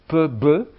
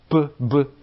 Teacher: vous avez surtout des occlusives bilabiales